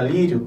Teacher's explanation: eu fecho a fossa nasal e eu pronunciou a palavra Lírio eu vou perceber que não vai ter a vibração do nariz porém a corrente de arte está em toda ela pela boca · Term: ditongo